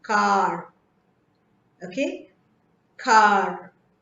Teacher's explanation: and R in the end is silent · whenever r comes immediately after a vowel, it almost takes the sound of the vowel itself